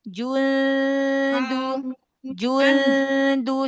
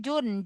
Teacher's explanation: Nih ketemu ikhfa akrob berarti ini. Nun ketemu dal. Jangan nempel di makhraj nun. Jangan nempel di makhraj huruf dal.